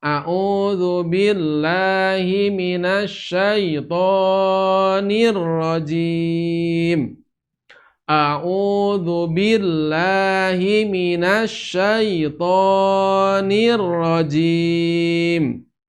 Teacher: Karena suaranya dipanjangkan, tidak diayunkan, maka membaca lahnya kepanjangan, membaca toknya kepanjangan.